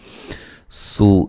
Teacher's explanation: سین کو باریک سیٹی سے واو مدہ ہے۔